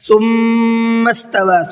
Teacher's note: ثم کی میم میں غنہ کرنا ہے، توا کے واو کے اوپر یہ چھوٹا مد ہے، 1 سے 3 الف کی برابر کھینچ کر کے پڑھنا ہے۔